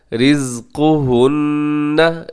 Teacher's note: रिज़्क़ु काफ पेश को मोटा पड़िएगा।